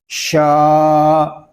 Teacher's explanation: شین کو ایک الف تک کھینچ کر پڑھیں گے کیونکہ یہاں پہ الف مدہ ہو رہا ہے